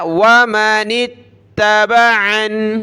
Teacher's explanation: نون کو تا کے ساتھ ملایا